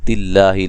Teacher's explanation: لفظ اللہ کو باریک، اس سے پہلے زیر ہے